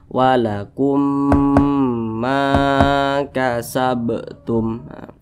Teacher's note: belakang huruf alif apabila dia berbaris ke atas maka dibaca panjang maka huruf mim dibaca panjang Karena dia berbaris ke atas atau memiliki harakat fathah dan posisinya tepat berada di belakang huruf alif Mad Thobi'i panjangnya